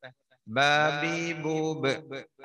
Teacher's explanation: ബാന്റെ മഹ്റജ് രണ്ട് ചുണ്ടാണ്, ശരിക്കും തട്ടിക്കോട്ടെ